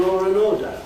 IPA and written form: ˈlɔːr ən ˋɔːdə (law and order)